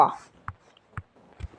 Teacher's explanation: तो दोस्तों इसका है दंत और ओष्ठ। ये दोस्तों ओठ से बोले जा रहे हैं और दंत से बोला जा रहा है वा